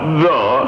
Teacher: th sound rumbles through my mouth